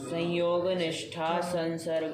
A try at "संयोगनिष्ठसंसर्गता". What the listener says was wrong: निष्ठा बोल दोगे ना बाबू तो प्रथमा हो जाएगा, प्रथमा हो जाएगा, पद टूट जाएगा, पद को तोड़ना नहीं है कि नहीं है? संयोग निष्ठ संसर्गता, ये निष्ठा विष्ठा नहीं बोलेंगे। निष्ठा बोल दिए तो फिर अलग अलग हो गया, हमको समस्त पूरा एक लच्छा बनाना है।